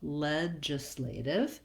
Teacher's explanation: we want to make sure that we're lengthening on the ledge portion, and then the islative is quick and reduced. This G says the J sound.